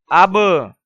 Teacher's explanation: با قلقلہ حروف میں سے ہے تو با کو قلقلے کے ساتھ ادا کریں گے، یعنی با کو ادا کرتے ہوئے اس کی آواز کو ہلائیں گے، جنبش دیں گے۔ حمزہ زبر با اب اس طرح ادا کرنا غلط ہے، بلکہ آواز کو جنبش دیتے ہوئے قلقلہ کریں گے۔